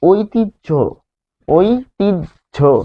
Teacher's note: যখন হয়ের সাথে জফলা থাকছে, যুক্ত বর্ণ গঠন করছে, তখন উচ্চারণ হচ্ছে বর্গীয় জ হসন্ত আর ঝ এর মতো।